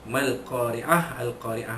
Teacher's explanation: Alif lam qamariyah ma asli dan ra tarqiq, ra bari bawah dibaca menipis